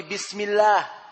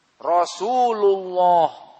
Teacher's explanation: lafdzul jalalah Allah muraqqaqah idza qablahu kasrah, seperti bismillah. Maka lafdzul jalalah lam di sini muraqqaqah, ataupun mufakhamah idza qablahu dhammah au fathah.